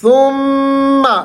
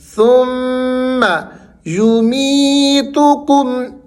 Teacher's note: میم یہاں پر مشدد ہے، غنہ کرنا ہے آپ نے